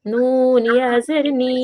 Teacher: ইয়া সাকিন, ডান দিকে জের, ইয়া মাদ্দাকে এক আলিফ পরিমাণ টেনে পড়া